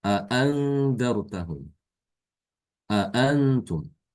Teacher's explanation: Kalau Hafs dia membaca dengan tahqiq. Hamzah yang kedua dibaca sama seperti hamzah pertama.